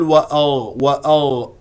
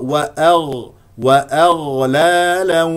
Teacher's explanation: الغين مفخمه لان من حروف الاستعلاء السبعه وهنا درجه ت تفخيمها الرابع لانها ساكن واغ يجري فيها الصوت